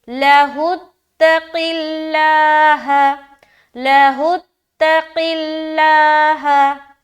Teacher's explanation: ہا کو تا سے ملا رہے، کیونکہ تا کے اوپر شد ہے یعنی کہ تشدید ہے، اور تشدید والے حرف کو 2 مرتبہ پڑھا جاتا ہے۔ · لفظ اللہ کا لام باریک رکھ رہے کیونکہ قاف کے نیچے کیا ہے، زیر کی حرکت ہے۔